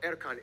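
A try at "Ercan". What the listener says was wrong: It's pronounced Erjan, not Erkan.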